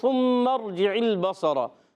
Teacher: اور میم مشدد ایک الف کا غنہ بھی کرنا ہے